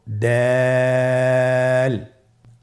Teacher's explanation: দাল হরফটি বারিক হরফ। এ হরফটি উচ্চারণ করার সময় আমরা অবশ্যই তিন আলিফ টেনে পড়বো।